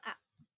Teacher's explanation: Vokal rendah, yaitu vokal yang dibentuk dengan menempatkan posisi lidah di bawah, yaitu vokal A.